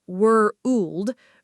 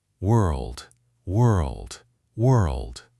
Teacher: the R and L blend together fast, almost like one continuous motion of the tongue, not 2 separate sounds happening one after another. World. The tongue starts shaping for the R and rolls straight into the L position without a full stop or pause between them.